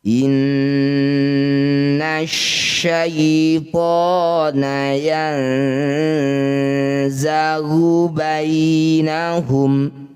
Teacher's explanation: Bunyi nunnya kita dengungkan dua harokat ya. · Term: gunnah musyaddadah